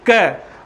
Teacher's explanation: और क में हवा बिल्कुल भी आ रही है क्या? देखिएगा नहीं आ रही है ना। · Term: अल्प प्राण